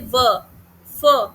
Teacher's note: तो इसमें बलेबियल वाला बलेबियल वो होते हैं बेटा जिसमें आपके दोनों लिप्स जो है होठों से दोनों होठों से जो आवाज निकलती है जैसे प ब म ठीक है फिर लेबियोडेंटल लेबियोडेंटल वो होता है जिसमें नीचे का दांत ऊपर के नीचे का होठ ऊपर के दांतों से मिलता है